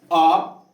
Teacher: अ में कुछ नहीं, पूरा एकदम कंठ से भीतर से आवाज निकल रहा है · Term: कंठ का उच्चारण स्थान